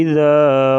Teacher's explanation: زال کے ساتھ بعد میں جو الف ہے یہ الف مدہ ہے، اس کو بھی ایک الف کے برابر لمبا کر کے پڑھیں گے۔